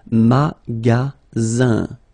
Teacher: Then you get the sound Z, alright? And then the ending here is IN, so it's nasal, it goes in your nose, and it's un.